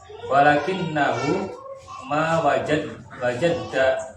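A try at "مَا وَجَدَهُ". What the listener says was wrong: Jangan ditasdid. Ya, ma wajadahu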